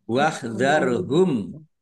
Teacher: Mim sukun bertemu dengan huruf wau. Bacaan izhar syafawi dibaca jelas.